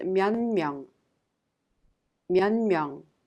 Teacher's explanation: Therefore, it affects the previous sound. The 디귿 in 몇 is affected by the nasal sound 미음, and it becomes 니은 and is pronounced 면명.